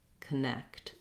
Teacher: then my my letter o says the uh sound falsehood again unstressed first syllable has that reduced vowel · looking first at connect we have second syllable stress so my next syllable is long has the clear f vowel · you really just want to be light and short on that k sound if you have difficulty putting that c and t together connect